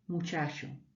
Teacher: Es una CH que se llama fricativa, que es una terminología de la lingüística, pero que se produce arrastrando un poco el sonido.